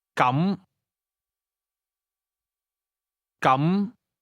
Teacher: Say in that case or then using a mid rising tone